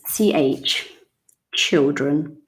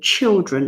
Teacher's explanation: Ch, not sh, no. Ch, it's like a strong T.